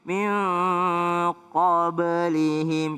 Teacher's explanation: Iya, ada huruf ba. Ba itu qalqalah. Jadi ada e-nya sedikit. · Ba itu qalqalah. Jadi ada e-nya sedikit. Min qablihim, jangan qablihim tapi qablihim.